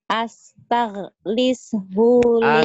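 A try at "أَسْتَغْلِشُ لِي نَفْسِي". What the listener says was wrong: Astagh bukan astag Astagh hunya pendek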